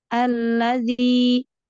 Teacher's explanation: alla lam tasdid, disempurnakan tasdidnya, ditekan di lam yang kedua. Alladzi, tapi juga jangan berlebihan.